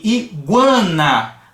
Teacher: Saiu de uma semivogal U para uma vogal AN. E a gente tem a nasalização aí desse trecho. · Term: crescente